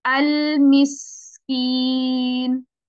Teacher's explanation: अल की टाइमिंग कम लगेगी आपको और सीन पे ज्यादा देखिएगा